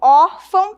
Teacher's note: Perceba que quando eu digo órfão, eu tenho um som aberto, órfão, e um som nasal, né? Eu uso aí as narinas também para trabalhar em favor desse som.